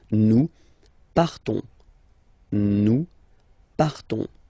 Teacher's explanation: So classic ending O-N-S, you don't pronounce the S, you just have this on sound nasal